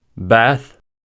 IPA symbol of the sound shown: θ